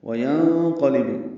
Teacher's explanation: نون ساکن کے بعد قاف آنے کی وجہ سے اخفا ہے